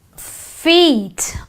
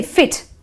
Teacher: we elongate the e so it is the long e sound